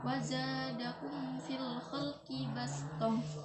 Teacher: Mim mati bertemu dengan fa, yaitu dibacanya idhar syafawi dan harus lebih jelas.